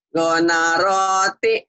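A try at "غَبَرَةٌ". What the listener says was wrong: Gonaroti, gonaroti, Kelihatannya aneh, masa ada gonaroti kan? Nggak ada, ada gobaroti. Gobaroti, titiknya di bawah, titik 1 bawah, bawah. Titiknya naik ke atas, naik, naik, ingat-ingat. Bawah, jangan lupa Bu ya.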